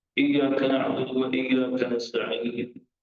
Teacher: Huruf hamzah ini dia tidak sama makhraj macam hurufnya alif, kerana huruf alif itu jauh rongga mulut